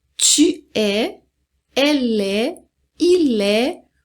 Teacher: Então, não pronuncia o S, não pronuncia o T.